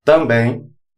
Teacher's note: Se vocês perceberem, também sai um som de um i. Por isso, chamamos de ditongo decrescente nasal, pela terminação n.